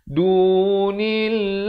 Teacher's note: Di sini hukum ikhfa hakiki, nun mati bertemu dal dua harakat dengan dibacakan secara samar. Dunillah, lafz jalalah di sini dibaca nipis dua harakat.